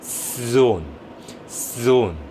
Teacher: 그래서 여러분들이 원어민 소리를 자세히 들어보시다 보면 때로 이거를 되게 천천히 발음하시는 원어민들은 S 소리를 앞에 달고 시작을 해요. · 앞에 S 소리에서 시작해서 Z로 바뀌었다가 own으로 합쳐지는데요. zone. 이렇게 때로는 앞에서 호흡으로 시작되는 발음처럼 넘어오는 단계들이 Z 사운드의 원리라고 생각하시면 됩니다.